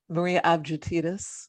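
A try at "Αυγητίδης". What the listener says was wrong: That's not a soft G. That's a hard G. Like get. No, it's not.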